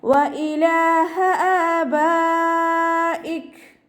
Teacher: മദ് വാജിബ് മുത്തസിലാണ്, 4ഓ 5ഓ കൗണ്ട് നിർബന്ധമായിട്ട് നീട്ടിക്കൊടുക്കുക കേട്ടോ.